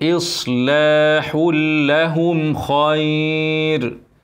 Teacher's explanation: الحاء منونه بعدها لام ادغام كامل من غير غنه ما فيش ايه نون ساكنه ولا ايه غنه ولا اي حاجه